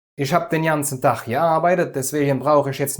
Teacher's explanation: T zwischen zwei Vokalen wird zu D